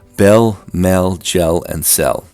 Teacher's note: The fail fell merger makes the pronunciation of these words identical